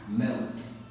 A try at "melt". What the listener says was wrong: Good boy. Well done. Nice pronunciation.